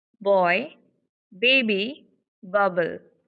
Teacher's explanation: While uttering, the words, you can feel that our vocal folds are vibrating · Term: voiced sound